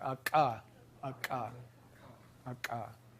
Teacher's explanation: Or velar ejective stops